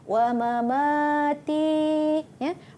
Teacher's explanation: Ma yang pertama pendek, ma yang kedua dipanjangkan.